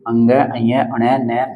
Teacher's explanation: इसमें बेसिकली नाक से हवा निकलती है, जब किसी इन वर्णों का उच्चारण होता है ना, तो नाक से और मुख से दोनों से वायु निकलती है। यानी कहने का मतलब यह है नाक की सहायता भी यहाँ पर ली जाती है नासिक्य व्यंजनों का उच्चारण करते समय, इसलिए उच्चारण के स्थान पर नासिक्य व्यंजन ये आपके 5 हो जाते हैं।